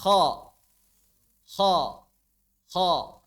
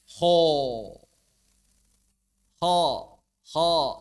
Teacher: Maka mulut dibuka, tidak dimonyongkan seperti saat mengucapkan O atau apalagi U.